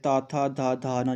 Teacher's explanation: त थ ध न जब आप इसका उच्चारण करोगे तो आपकी जीभ क्या है? दांत को टच करेगी।